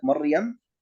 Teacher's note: وراء ساكنة سبقت بفتحة مثل كلمة مريم، أيضا هذه الراء تكون مفخمة